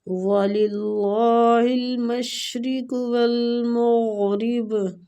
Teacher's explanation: وَلِلَّهِ الْمَشْرِقُ وَالْمَغْرِبُ، وَلِلَّهِ اللہ کی لام کو ادھر باریک پڑھیں گے، المشرق شین باریک سیٹی والا، قاف مستعلیہ حروف پر پڑھیں گے، والمغرب وہ پہ ہونٹوں کو گول اور غین بھی مستعلیہ حروف ہے، اس کو پور پڑھیں گے، را کسرہ کی وجہ سے باریک پڑھی جائے گی